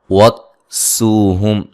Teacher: سین کو باریک سیٹی سے و مدہ ہے، یہاں میم ساکن کا اظہار ہے.